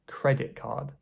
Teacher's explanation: the words are squished together and the T has disappeared. So the K is shared between both words.